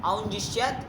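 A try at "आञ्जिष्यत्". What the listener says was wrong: ओ क्यों हो जाएगा? अरे अंज धातु है, आठ आगम करोगे तो आ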